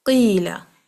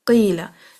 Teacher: तो कसरा की आवाज को लंबा करेगी मदिया।